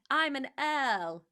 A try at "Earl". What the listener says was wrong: Yes, but it's not got like 4 R's in it, one after another. 1 R.